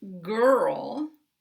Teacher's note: in the word girl, I don't have to move my tongue so much because it's already back.